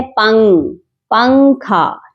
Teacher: ہم پنگ پے کو ہی کاف کے ساتھ ملا دیتے ہیں اور نون کی آواز کو ناک میں چھپا کر پڑھتے ہیں. ڈائریکٹ ہم جو ہے نون کی آواز کو، نون کے مخرج کو کلیئرلی ادا نہیں کر رہے ہوتے. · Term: اخفا